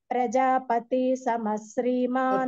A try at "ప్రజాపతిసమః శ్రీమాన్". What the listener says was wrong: పతి అన్నప్పుడు దీర్ఘం లాగా వినపడుతుంది దీర్ఘం వినపడకూడదు